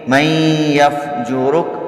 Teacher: من یفجرک یہاں ادغام ہوگا غنے کے ساتھ